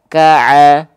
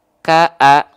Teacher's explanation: ah dia dilafalkan dari tengah-tenggorokan · pastikan Ain dilafalkan tepat dari bagian tengah tenggorokan